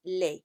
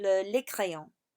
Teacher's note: You don't pronounce the S.